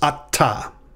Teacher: this is actually two syllables and the tav is actually doubled